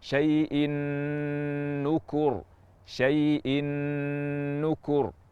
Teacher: Gunnah memanjang, gunnah sangat sempurna. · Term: idgham bi gunnah